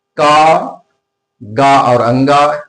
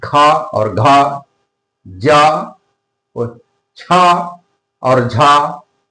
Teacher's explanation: महाप्राण वर्णों में मुख से वायु थोड़ा ज्यादा मात्रा में निकलती है, इसलिए इन्हें अल्प प्राण और महाप्राण कहा जाता है।